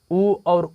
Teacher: उ और ऊ की बात करें तो किसका प्रयोग होता है? तो ओष्ठ का प्रयोग होता है।